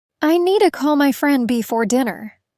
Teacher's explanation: Stress, need, call, friend, dinner.